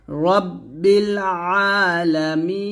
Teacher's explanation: এই আইনের উচ্চারণটা চাপ দেয় না হামজার মত উচ্চারণ করি তো হামজার মত উচ্চারণ করলে হবে না একটু চাপ দিতে হবে